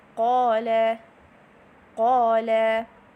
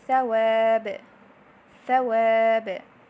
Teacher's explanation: the air in the heavy alif is coming outside, and the deepest portion of the tongue is elevated a little bit